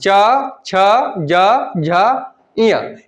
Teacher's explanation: इनका उच्चारण स्थान क्या होगा, तालु से होता है। यानी ये तालु से टकरा करके आते हैं, तो इनका उच्चारण स्थान क्या हो जाएगा, तालु हो जाएगा।